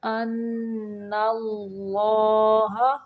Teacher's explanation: ان پہ نون مشدد کا غنہ ہوگا اور اللہ کا لام موٹا پڑھیں گے